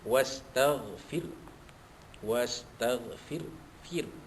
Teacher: Bihamdi rabbika, ra, balik atas dibaca tafkhim, rabbika wastaghfir, wastaghfir, fir, ya, ra sukun tu dibaca nipis